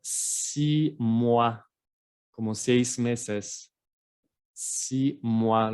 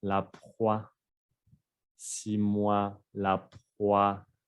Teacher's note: la O y la I. En francés se va a pronunciar wa.